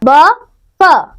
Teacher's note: दंतोष्ठ्य नीचे का होठ और ऊपर का दांत